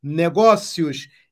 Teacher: o i é semivogal e o o é vogal semivogal é o som menos intenso vogal é o som mais intenso Então vai crescendo sai de semivogal para vogal vai crescendo ditongo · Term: ditongo crescente